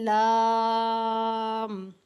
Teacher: آگے والی ہماری زبان کا جو کنارے ہیں یہ اوپر والے دانتوں اور تالو کی جانب جو ہیں وہ ٹچ ہو رہے ہیں